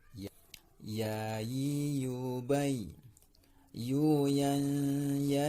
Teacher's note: makhraj huruf ya yaitu adalah tengah lidah mengenai langit-langit di atas.